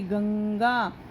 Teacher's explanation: मतलब हमारे को नाक का सहारा लेना पड़ता है बोलने के लिए · देखो ये एक बिंदु है, इसका उच्चारण करते समय नाक से ध्वनि निकलती है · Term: अनुस्वार